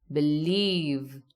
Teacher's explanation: The stress here is on leave.